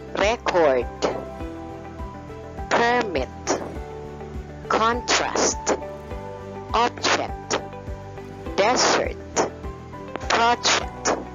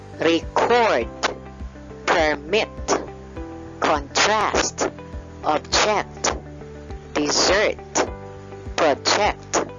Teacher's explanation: These nouns usually have the stress on the first syllable, while the verbs usually have the stress on the second syllable.